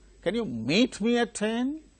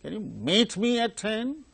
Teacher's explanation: that's raising tone the tonic syllable is meet